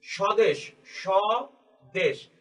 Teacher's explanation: দন্ত স এর উপর আমরা জোর দিচ্ছি যদিও সেটা উচ্চারণের তালব্যস হয়ে যাচ্ছে